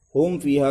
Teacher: میم کا سکون بالکل تام ہونا چاہیے، حرکت کی ہوا بھی نہیں لگنی چاہیے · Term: میم ساکن